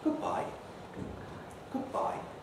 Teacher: if we're being quite formal you can give whatever expression is you're saying a low rise and a kind of high prehead so something like goodbye goodbye starting quite high in my register